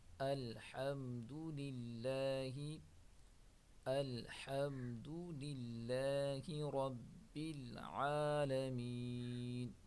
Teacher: اسلام کو باریک پڑھیں گے، را کو موٹا پڑھیں گے